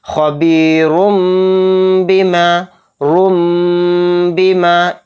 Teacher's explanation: تنوین، تنوین کے بعد با آ رہا ہے تو اس میں بھی اقلاب کا قاعدہ ہو رہا ہے یہاں پر، اور اس را دو پیش رن کا جو لاسٹ میں نون کی آواز آ رہی تھی یعنی این کی وائس، وہ نہیں پڑھی جائے گی، وہ سائلنٹ ہو جائے گی، اور اس میں را میں ہم میم کو ملا کر پڑھیں گے یعنی غنہ اور اخفا کے ساتھ۔